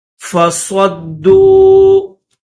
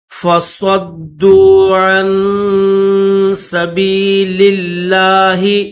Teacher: ایمانہم جنتن فصدوا، صاد کو دال کے ساتھ ملائیں گے، دال کے اوپر تشدید بھی ہے اور پیش بھی ہے، تو صاد کو دال کے ساتھ ملا کر اور اس کو سختی کے ساتھ پڑھیں گے۔ فصدوا عن سبیل اللہ، لام کو، یہ جو لام ہے سبیل کا لام، اس کو لفظ اللہ کے ساتھ ملائیں گے۔